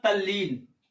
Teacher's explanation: अब जैसे लिखा है तत् धन लीन, तो जो त है वो खुद ही बदल जाएगा ल में, तो बन जाएगा तल्लीन।